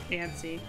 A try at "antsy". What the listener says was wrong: There's no T. It's antsy.